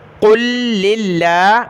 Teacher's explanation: پارہ نمبر 24 فمن اظلم، تو اس میں سورۃ الزمر کی آیت نمبر 44 ہے، یہاں سے شروع ہے قُل لِلَّهِ الشَّفَاعَةُ، قاف کو ملائیں گے لفظ اللہ کے اس لام کے ساتھ، پھر لفظ اللہ کے لام، پہلے لام کو دوسرے لام کے ساتھ، لفظ اللہ کو باریک پڑھنا ہے کیونکہ لام پر زیر ہے۔